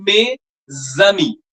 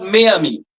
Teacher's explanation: s will be pronounced like a zed with the next vowel